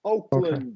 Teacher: You emphasize that W very nicely. Here, when we have land in place names like cities, countries, and so on, we're going to turn that into a schwa.